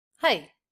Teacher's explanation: Sort of abrupt, quick up-down shape.